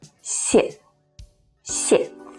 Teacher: the first see is the original fourth falling tone sharp and short si si and the second one changes to the neutral tone · the original fourth falling tone sharp and short si si and the second one changes to the neutral tone which is light without any stress